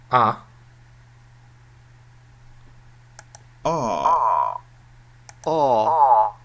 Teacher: unrounded ah okay this is pronounced quite long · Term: back vowels